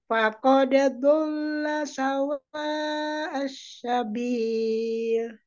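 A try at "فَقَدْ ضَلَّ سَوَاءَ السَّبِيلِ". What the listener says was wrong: Ini masih kurang tepat, Bu. Asa, asa, asa. Ya, jangan ada unsur ke tengah ya. unsur lidah ke bawah. Ke gigi seri bawah.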